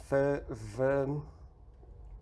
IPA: f v